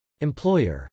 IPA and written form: ɛmplˈɔɪɚ (employer)